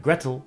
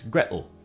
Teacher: the T in water, as well as the T in Gretel, is generally pronounced as a glottal stop in Cockney English. So while in some British accents it would be water, in Cockney it's water, and rather than Gretel, it's Gretel.